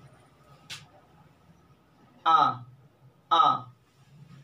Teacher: जैसे आ आ आ, आप यहां से बोल रहे हैं, बड़ा आ अगर आप बोलेंगे, बड़ा आ तो भी यहीं से बोलेंगे, मतलब कंठ से।